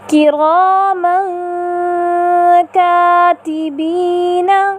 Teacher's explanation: اخفا کا مرتبہ اخفا بمرتبہ ادنیٰ ہوگا اور آواز بھی پیچھے کی جانب رہے گی